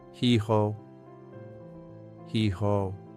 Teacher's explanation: H from the back of your throat.